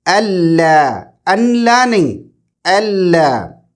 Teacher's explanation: آپ نون کو ڈراپ کریں گے، آپ نون کو نہیں پڑھیں گے، اگنور کریں گے، آپ حمزہ کو ڈائریکٹ لام سے کنیکٹ کریں گے